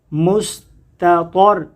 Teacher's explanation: یہاں تا باریک ہے اور دوسرا طا جو ہے وہ موٹا ہے